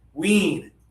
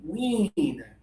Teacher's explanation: So, if you think about your front teeth right here, and you think about the top of your mouth, and this is your tongue, your tongue is high, and there's just a little bit of air for this one. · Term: high tongue